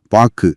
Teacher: ஆனா பாக்குன்னு சொல்லி முடிக்கும் போது அந்த கு முழுமையா ஒலிக்காம காத்துல அப்படியே பாதியிலேயே கரைஞ்சிறத உங்களால உணர முடியுதா? பாக்கு அந்த ஊ ஓசை முழுமையா வெளியே வராது. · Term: குற்றியலுகரத்துல